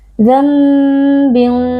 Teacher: karena ada nun sukun yang bertemu dengan huruf ba cara membacanya nun sukun kita qalb atau kita ganti menjadi Bunyi mim sukun dambin ya bukan dambin tapi nunnya diganti menjadi Bunyi mim makanya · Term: iqlab